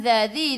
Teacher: Ya ayyuhalladzi, lam ada sabdu, tekan ke dalam lam. Zadzi, du hujung lidah keluar pada gigi depan